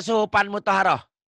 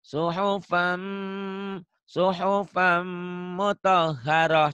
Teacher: Suhufan ditahan ya. Dengung ada dengungnya.